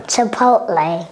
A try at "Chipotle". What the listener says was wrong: Chipotle. D'abord, c'est ch, ch. C'est pas chi, c'est pas chi. En français, ça, c'est chi. En anglais, ça, ici, c'est ch, ch, ch, pot.